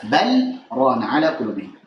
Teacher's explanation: Kalla bal rana, di sini lamnya walaupun ketemu ra dibaca dengan izhar. Kenapa? Karena pada riwayat Hafiz Asim dari Jalur Syatibiyah itu dibaca dengan saktah, sehingga lamnya harus jelas.